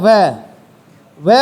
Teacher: व का उच्चारण करते समय ऊपर वाले दांत नीचे वाले होट को छूते हैं